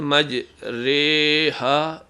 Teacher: یہ امالہ والی آواز ہے، بڑی یہ کی آواز ہے جو اردو میں بھی استعمال ہوتی ہے